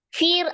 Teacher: Fir ada ro sukun sebelumnya kasroh, ro-nya berarti dibaca tipis